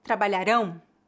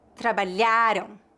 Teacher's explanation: nasal ão é igual a do ditongo nasal am no entanto a sílaba tônica de palavras com ditongo ão geralmente é a última palavras oxítonas enquanto a sílaba tônica de palavras terminadas em AM é a penúltima